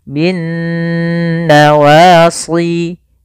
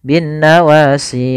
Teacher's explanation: itu kurang tepat dan salah karena tidak menahan gunahnya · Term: bacaan gunnah